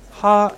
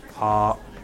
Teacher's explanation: A syllable sung higher, ha, can mean something different than that same syllable sung lower, ha.